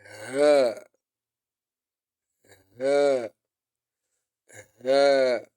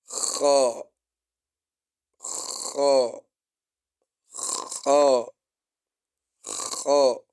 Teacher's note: Alhams, the whispering. Air flows with it.